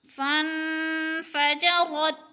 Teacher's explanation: اخفا کرنا ہے، یعنی ناک میں آواز لے جانی ہے ، اخفا کا معنی ہے لفظ کو چھپا کر پڑھنا، فَانْفَجَرَتْ،